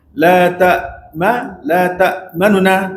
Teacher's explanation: Kita baca 1/3 daripada bunyi baris nu tu panggil ikhfa harakah. Menyembunyikan baris.